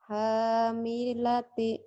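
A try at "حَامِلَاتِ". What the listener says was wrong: panjang ulang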